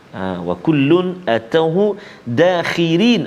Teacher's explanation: Ra dekat situ pada kalimah dakhirin kita baca nipis tarqiq. Kenapa? Sebab ra baris bawah.